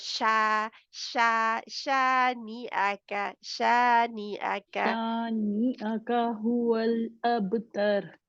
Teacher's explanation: शीन में वो फैलती है आवाज